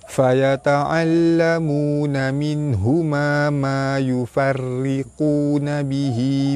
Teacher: sebenarnya huruf ra tu dia nipis. Okey, dia nipis. Kerana huruf ra tu ada baris bawah.